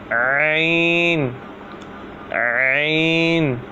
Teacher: عین جو ہے حلق کے درمیان والے حصے سے ادا ہوتا ہے